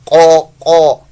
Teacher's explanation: آپ کی زبان کی جو جڑ ہوتی ہے پیچھے سے حصہ جو ہے یہ تھوڑا سا اوپر کی جانب جاتا ہے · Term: پر موٹا